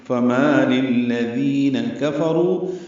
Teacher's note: ذی آئے مدہ ہے، 2 حرکات لمبا کریں گے